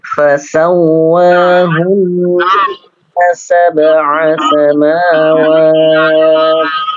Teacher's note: Untuk huruf wawu tidak dipanjangkan ya. Tidak dipanjangkan.